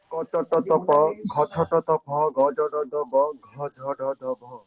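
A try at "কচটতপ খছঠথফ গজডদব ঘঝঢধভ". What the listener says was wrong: তোমার ফয়ের উচ্চারণটা তো হচ্ছে না। আমি যে 3-4 বার শুনলাম এর পেছনে ফয়ের উচ্চারণটাই হচ্ছে না।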